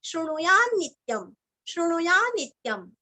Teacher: श्रुणुयान आधा न ले लीजिए और नित्यम इसको जोड़ना है